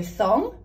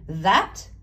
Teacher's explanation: So thong, your voice box doesn't vibrate or move. That, it does. You can feel it in your throat.